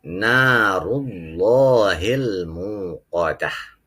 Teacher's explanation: Nah, di sini mad tabi'i. Ra berharokat dhammah, ra tafkhim. Allahi lafaz jalalah tafkhim.